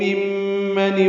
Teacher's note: ممن میں میم مشدد ہے تو غنہ کریں گے